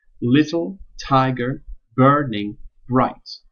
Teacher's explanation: ending on a stressed syllable with alternating stressed and unstressed syllables